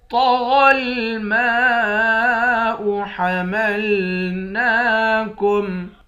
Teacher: میم کے بعد الف ہے، اس الف پر مد ہے، اس مد کو 5 الف کے مقدار کھینچ کر پڑھیں گے۔ نون پر کھڑا زبر ہے، اس کو بھی ایک الف کے مقدار کھینچ کر پڑھیں گے۔